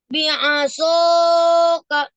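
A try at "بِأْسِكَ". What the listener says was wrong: Ya, gak usah panjang-panjang banget ya. Bi'asoka.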